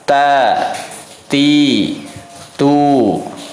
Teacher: ujung lidah kita nempel ke pangkal gigi seri atas